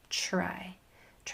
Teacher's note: Pay attention to the sound and the way that you are articulating the TR. Don't let it change into a CHR sound.